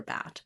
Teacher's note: So, primarily this one is about recognizing letter A as Ah, and then getting the correct placement that it's front and not back and that it's open and not mid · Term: ah sound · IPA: /æ/